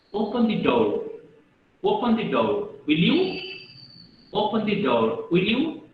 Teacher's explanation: When I'm giving a statement about you are going to school, in my normal voice, in my low voice, I'm speaking that you are going to school. But when I'm using the question tag, I'm raising my voice. I'm speaking up. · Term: intonation